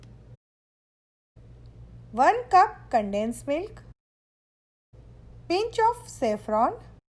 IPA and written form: kʊlfiː (Kulfi)